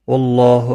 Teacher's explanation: اللہ کا لام زبر کی وجہ سے پر پڑا جائے گا. اس کے اوپر کھڑی زبر بھی ہے، ایک الف کے برابر کھینچ کر پڑھیں گے.